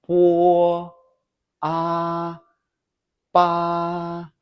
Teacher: notice your vocal cords only vibrate when you hit the vowels